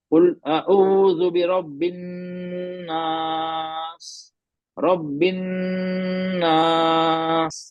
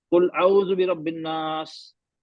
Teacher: जब नून पे तशदीद होती है हम वहाँ गुन्ना करते हैं, हम नून की आवाज को पकड़ के रखते हैं नाक में , बिन, नाक, वो मैंने नहीं किया, मैंने एक कायदा छोड़